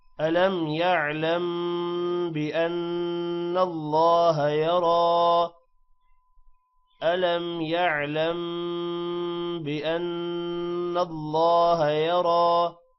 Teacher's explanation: بأن اللہ نون پر غنہ ہے، اللہ کا نام موٹا ہوگا. یرا را موٹا بھی ہوگا اور تھوڑا سا لمبا بھی ہوگا کیونکہ کھڑی زبر ہے اوپر